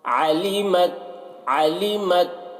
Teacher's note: ता में आवाज़ को टकराना नहीं है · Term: कलकला नहीं करना